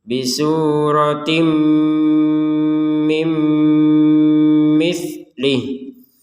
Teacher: Nah, tanwin bertemu mim ya sama ya, dimasukkan kemudian dengung.